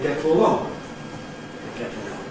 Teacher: So a schwa + [l] producing a syllabic [l̩] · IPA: [ -tl̩- ]